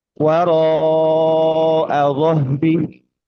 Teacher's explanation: Waro al-dhahri. Di sini kita menjumpai bunyi panjang huruf ro ya, huruf ro fathah bertemu dengan alif